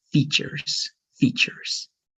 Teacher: make it just one straight e like features features